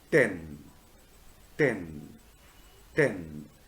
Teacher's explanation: This type of consonant sound resulting from blocking or stopping effect on the air stream, I have already explained, is called a stop or a plosive. A full description of the to sound at the beginning of a word like 10 is a voiceless alveolar stop.